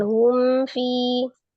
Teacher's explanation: yang diperhatikan adalah mimnya Ya mimnya sifatnya tawassut maka harus eh dialirkan sebagian ditawasutkan dibainahkan ya humfi tidak humfi itu namanya tertahan atau eh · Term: izhar syafawi